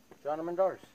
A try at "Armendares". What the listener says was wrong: Roll your R, bro. Don't be shy.